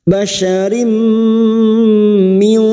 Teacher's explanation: memasukkan dengan mendengung memasukkan pada huruf mim Rim dan mendengung selama tiga harakat basyarim Min nun sukun bertemu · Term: idgham bi gunnah